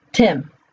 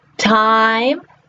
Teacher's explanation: Tim. Okay, it's very short. Time, the vowel is very long. It's that long I.